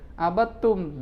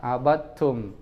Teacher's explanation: Dalnya dihilangkan masuk ke ta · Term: Idgham